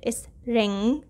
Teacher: the g sound is not very prominent when it is with n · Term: ng diagraph, ng sound